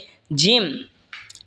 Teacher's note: জিম জিহ্বার মধ্যখান তার বরাবর ওপরে তালের সঙ্গে লাগা উচ্চারণ হবে জিম